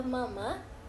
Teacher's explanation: Contohnya saat mengucapkan kata mama, udara tersebut keluar dari paru-paru. Pita suara bergetar, lalu bibir menutup dan membuka sehingga menghasilkan bunyi m dan a.